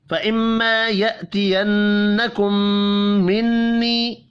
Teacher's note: میم مشدد، نون مشدد، پھر میم مشدد اور نون مشدد، چاروں پر غنہ ہوگا۔